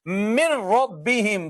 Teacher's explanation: نون کا ادغام ہو چکا ہے را میں، لہذا نون لکھا ہوا تو نظر آئے گا مگر پڑھنے میں نہیں آئے گا۔ اس کو کہتے ہیں ادغام۔